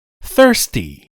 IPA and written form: ˈθɜːrsti (thirsty)